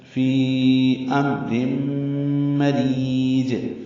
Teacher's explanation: رم میں ادغام ناقص ہے، غنہ کریں گے، آواز ناک کے بانسے میں 2 حرکات تک ٹھہرائیں گے۔